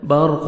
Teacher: را ساکن سے پہلے زبر ہے، را کو اپنے پر کرنا ہے، قاف کو موٹا کر کے پڑھیں گے